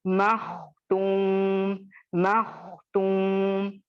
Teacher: मैं कलकला भी नहीं की और मैं खा को लाइट करते हुए भी नहीं पढ़ी, बल्कि इसको मैं मोटा पढ़ी और मखरज को कंट्रोल करते हुए पढ़ी, कलकला नहीं होने दिया, ठीक है।